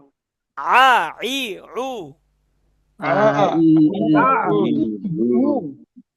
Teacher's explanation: ঠিক আছে, এবার দেখেন, এই যে এটা আইন জবর আ, আইন জবর আ, গলার মাঝখান, হলকের মাঝখান থেকে শক্তি দিয়ে আইন জবর আ